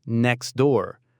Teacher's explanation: The T just vanishes to make it flow better.